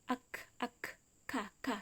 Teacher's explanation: Qaf itu dari pangkal lidah bertemu dengan langit-langit mulut yang bagian lunak, qaf. Sedangkan kaf pangkal lidah bertemu dengan langit-langit mulut yang bagian keras